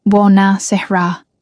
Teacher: "Buona sera," he corrected gently, emphasis on the second to last syllable. "Buonasera," she tried again.